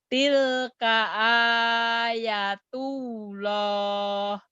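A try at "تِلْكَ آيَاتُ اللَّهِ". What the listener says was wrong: Ya-nya kan panjang. A-nya panjang. Ya-nya juga panjang. Ada yang berdiri tuh. Kalau ada yang berdiri mad asli panjang.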